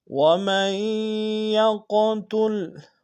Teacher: وَمَن يَقْتُلْ، وَمَن میں میم کو یا کے سامنے لیں گے، یا کے اوپر شدہ زور دیں گے، اور یا کو قوف کے ساتھ ادا کریں گے، قوف کو موٹا ادا کریں گے، قوف کے اوپر جزم ہے، قلقلہ کریں گے